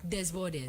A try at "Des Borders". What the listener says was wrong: It's the first S is silent, so it's the boards.